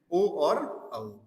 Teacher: ये कंठ और ओष्ठ से मिलकर के बनते हैं साथियों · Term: कंठोष्ठ